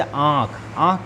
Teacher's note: जब हवा मुंह और नाक दोनों से निकलती है तो यह हो जाते हैं अनुनासिक।